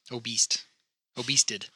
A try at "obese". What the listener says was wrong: No, obese. No T.